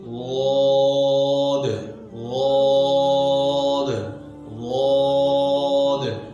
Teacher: लौद के अदा करते वक्त आवाज अपने मखरज में ऐसे नरमी के साथ ठहरती है कि उसके असर से आवाज जारी रहती है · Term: रिख्वत